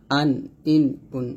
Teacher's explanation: হামজাটা কণ্ঠনালীর শুরু থেকে আমরা উচ্চারণ করবো